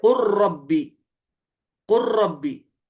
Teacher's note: लाम का मखरज भी करीब है र से और सिफत भी करीब है। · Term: इदगाम मुतकारबैन